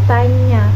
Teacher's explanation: dengan menempelkan depan lidah pada langit-langit keras agar menahan udara dari paru-paru. Udara yang terhambat itu kemudian dikeluarkan melalui rongga hidung sehingga terjadi persengawan. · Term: konsonan nasal palatal